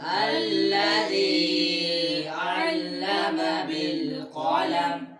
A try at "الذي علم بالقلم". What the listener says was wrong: ध्यान रखो इस पर मद तो नहीं है जो आप मद की तरफ जा रहे थे।